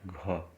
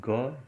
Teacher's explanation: घ में हम देख रहे हैं ज़्यादा संचार हो रहा है और ग में कम हो रहा है